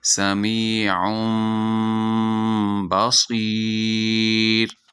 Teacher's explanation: اگر تنوین کے بعد حرف با آ جائے تو وہاں اقلاب ہوگا، یعنی نون کی آواز کو میم سے بدل کر پڑھیں گے